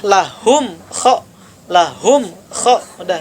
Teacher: izhar jelas tidak ada guna tidak ada dengung Tidak ada pantulan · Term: izhar syafawi